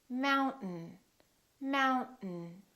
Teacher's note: in the vowel disappears so we say mountain don't say mountain don't release your tongue keep it up and just go directly to the N